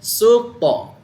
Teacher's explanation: Dekat hujung lidah, letak dekat gigi atas, dia ada tendang. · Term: qalqalah